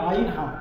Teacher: এটা হচ্ছে কন্ঠনালীর মাঝখান থেকে বা হালাকের মাঝখান থেকে